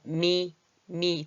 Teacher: 두 입술이 이렇게 붙었다가 떨어지는 소리.